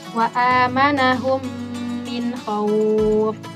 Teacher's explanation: dimasukkan ke dalam huruf berikutnya disertai dengan dengung ketika bertemu dengan huruf mim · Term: idgham mithlain